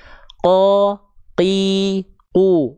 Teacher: lafalkan, rasakan pangkal lidahnya nempel ke langit-langit yang paling dalam. Ya, rasakan, kalau perlu meremelek silahkan ya. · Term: huruf qaf